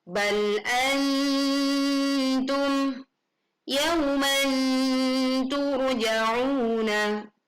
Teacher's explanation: saat nun sukun bertemu ta. Maka bunyi yang muncul adalah lebih cenderung terdengar bunyi nun sukun, atau dalam huruf Latin itu seperti huruf N.